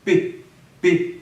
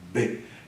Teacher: mexe com B Já o outro é p p ele é uma oclusiva surda e outra oclusiva sonora